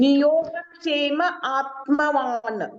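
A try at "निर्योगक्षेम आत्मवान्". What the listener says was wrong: ಅಲ್ಲಿ ನಿಯೋಗ ಅಲ್ಲ ನಿರ್ಯೋಗ ನೋಡಿ ಅರಕವಳೆ ಇದೆ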